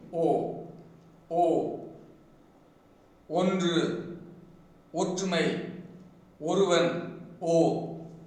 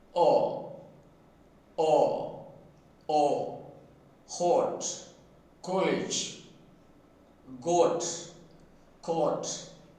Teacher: When the Tamil phoneme O is produced the lips are closely rounded. O, O, Ondru, Ottumai, Oruvan, O, closely rounded. But in the case of O, in the case of English phoneme O, the lips are up rounded and open.